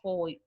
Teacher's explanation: o decrescente oral é quando eu saio lá de uma vogal e vou para uma semivogal